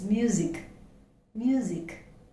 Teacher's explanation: even though we have the alphabet s the pronunciation is z